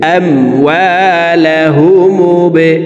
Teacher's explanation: হামজাহ মিম জবর আম, ওয়াও আলিফ জবর ওয়া, আম ওয়া, লাম জবর লা, হা পেশ হু, মিম বা পেশ মুবে, বা কলকলার হরফ নিচের দিকে ধাবিত করে ধাক্কা দিয়ে উচ্চারণ করব